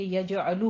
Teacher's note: یجعلہ میں یجعل نہیں ہے، فعل مضارع ہے، آپ کو ماشاءاللہ سے پہچان ہے کہ یجعلو ہوتا ہے، مضارع کا آخر مضموم ہے تو خاص دھیان رکھیے گا. یجعلو لام کے اوپر ضمہ ہے، دونوں ہونٹ گول کیجیے اور جیم پہ قلقلہ کرنا ہے.